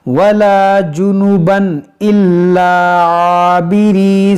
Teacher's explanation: تنوین کے بعد حمزہ ہے، تو یہاں پر کیا ہوگا؟ اظہار، یعنی یہاں پر غنہ نہیں کریں گے